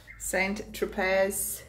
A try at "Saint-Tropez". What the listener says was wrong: Saint-Tropez. I don't think you pronounce the Z.